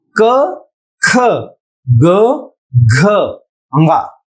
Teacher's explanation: स्पर्श में हमने पिछली कक्षा में पढ़ा क वर्ग का उच्चारण कंठ से होता है